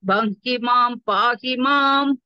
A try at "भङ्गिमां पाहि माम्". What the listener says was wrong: Bamhimam no. Bamhima pahimam. There is not extra ma. Bamhimam you are saying.